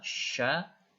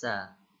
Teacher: perhatikan shin dengan sin, beda, ini tebal sya, ini tipis sa.